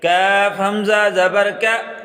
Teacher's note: کاف کے ساتھ یہ جو کھڑا ہے یہ الف نہیں ہے، حمزہ ہے، کاف کو جھٹکا لگا کر پڑھیں گے